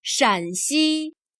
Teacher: Here shan has a lower, falling tone